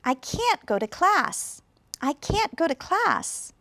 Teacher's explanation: you can hear that can't has strong stress or irregular stress, go has stress, and class has stress also